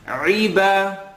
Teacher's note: allow the ayn to have an e sound